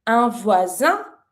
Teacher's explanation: s is between two vowels, so you pronounce it like a z sound.